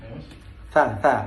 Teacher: Jadi kalau konsonan itu hembusan udara dari paru-paru itu terjadi halangan di alat-alat artikulator seperti pengucapan huruf-huruf Arab ijahi, huruf-huruf Arab seperti bilang atha. Huruf atha di sini ada penghambatan di bagian ujung antara gigi